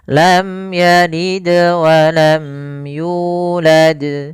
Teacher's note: di sini ada bacaan qalqalah, yaitu suara dalnya dipantulkan.